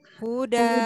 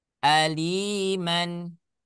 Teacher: jika kita waqaf ya maka kita baca dua harakat dengan menggantikan tanwin ini ya menjadi menjadi Alif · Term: Mad Iwat